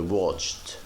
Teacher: We didn't say watched by D, we say watched by T.